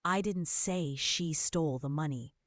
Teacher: Emphasizing say suggests you implied it without saying it.